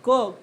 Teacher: त्याला आपण अघोष म्हणत असतो म्हणजे कसं कठोर व्यंजनाचा उच्चार क चा उच्चार करत असतानी आपल्या गळात कंपन होत नाही